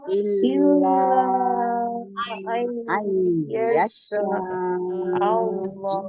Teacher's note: di situ ada lam tasdid, berarti lamnya double ya. Hati-hati sifat lamnya tawassul.